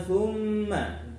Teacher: mim tasydid, gunnah musyaddadah ya, harus dengung